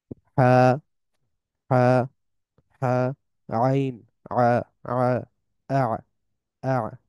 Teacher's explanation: হা এবং আইনটা হচ্ছে গলার মাঝামাঝি পর্যায় থেকে আসে।